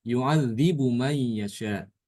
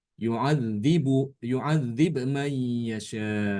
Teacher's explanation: Imam Ibnu Katsir dia membaca dengan mengqalqolahkan ba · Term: mengkolkolahkan ba